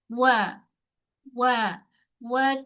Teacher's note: Wa muncung mulut untuk semua keadaan huruf wau. Sebab huruf wau memang kena muncungkan kedua bibir mulut